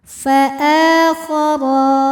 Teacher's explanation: Sebab ra berharokat fathah. Cara membacanya ra dibunyikan dengan tebal. Fa'akhara, ra mad tabi'i muqaddar. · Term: tafkhim